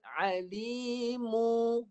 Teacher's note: Lepas mu baru bibir tukar pada mim dengan ikhfa.